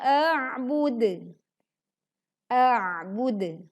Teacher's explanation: kita membaca hamzah terlebih dahulu lalu kemudian menekan di huruf ain sukun lalu pantulkan dal dengan kondisi berwaqaf sehingga pantulannya lebih terdengar jelas